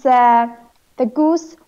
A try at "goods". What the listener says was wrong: goods. now it's when you say it, it sounds like the goose.